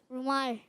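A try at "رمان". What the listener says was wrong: रुमाल? रुमाल नहीं है, रुमान। रुमान जैसे नून भी आएगा, लेकिन यह है रुमान। रुमाल नहीं, रुमान।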